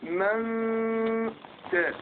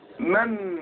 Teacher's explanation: لو اظهرت النون اقول من يبقى ايه طرف اللسان لزق فين في اصول الثنايا